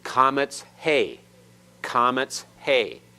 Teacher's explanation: the hey is silent here, but it's part of the vowel. It lengthens it further. Where comets alone is father, this one is father.